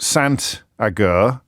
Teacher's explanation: The T is pronounced because it's followed by a vowel.